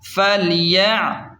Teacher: فلام زبر فل، یا عین زبر یا، فلیع، عین کو حلق کے درمیان سے صاف نکالیں۔ با پیش بو، دال واو پیش دو، فلیعبدوا، یہاں پر واو مدہ ہے تو اسے ایک الف کے برابر کھینچ کر پڑھیں۔